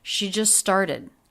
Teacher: So the two words link together with a single S sound.